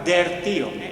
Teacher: ese rotacismo el paso de la L A la r